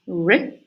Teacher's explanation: made with the tip of the tongue that goes up, kind of approaches the alveolar ridge or the area behind the alveolar ridge without creating any firm blockage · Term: post-alveolar sound